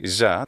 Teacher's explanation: this intervocalic s becomes a z sound